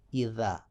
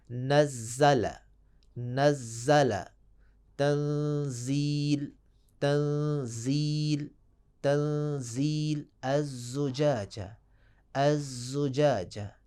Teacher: ذال میں سیٹی کی آواز پیدا نہیں ہوگی، اذا، جبکہ حرف زا میں سیٹی کی آواز پیدا ہوگی